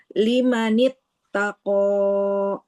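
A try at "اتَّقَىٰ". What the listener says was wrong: Oke, kofnya dua harokat saja, Ibu. Jangan kepanjangan ya. Lima nit tako.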